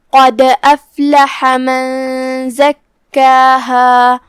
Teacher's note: من زکاہا جو کہ کلمت زکاہا میں یہاں کاف پہ تشدید ہے، لہذا اس کا دھیان رہے 2 حرف کی مقدار میں کاف کو پڑھنا ہے